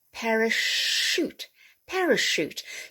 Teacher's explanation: words originating from french will have a soft ch like the sh sound